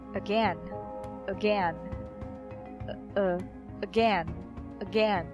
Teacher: So the first syllable is the schwa sound. Second syllable is the stressed one.